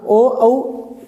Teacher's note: आपके होठों की आकृति गोल बनती है और थोड़े से होठ आगे की तरफ आते हैं